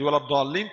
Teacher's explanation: tekan di makhraj lam. Tahan lama lama sedikit. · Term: nabr